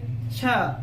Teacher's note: छ ज्यादा लग रहा है, ज्यादा प्राणवायु की जरूरत पड़ रही है, तो महाप्राण